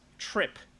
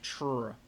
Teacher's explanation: So in English, we have what are called true clusters, where, like for instance, trip. You pronounce the T and the R kind of as one thing, tr.